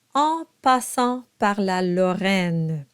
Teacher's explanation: And that is an sound where you let your soft palate drop a little bit and air will go through the nose and you get the nasal quality. Now you may not want to overthink this, but that's actually what's happening. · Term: nasalized sound